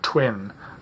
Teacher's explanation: first transcription some people have a word like twin the W there's aspiration of the T the W becomes partly voiceless